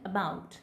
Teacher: So this is transcribed as अ ब आ उ ट, अबाउट. So this weak form of a is called schwa sound